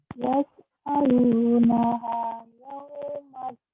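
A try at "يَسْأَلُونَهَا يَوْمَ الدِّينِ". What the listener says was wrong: Yaslaunaha, coba lagi ulang. Din, 4 panjang. Yaumaddin. Di-nya 4.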